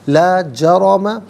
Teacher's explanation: جرم میں را پر زبر ہے تو یہ را کو پر کر کے پڑھیں گے